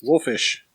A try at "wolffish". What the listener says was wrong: No, wolffish. No, there's 2 F's.